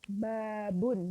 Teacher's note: Babun itu setelah huruf ba yang pertama ada alifnya, sehingga dia terbaca panjang. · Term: vokal saut tawilah